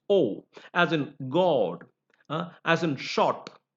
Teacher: the o sound that is pronounced with a rounded lip